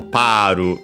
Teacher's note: Paru in Japanese, without the lengthening of the vowel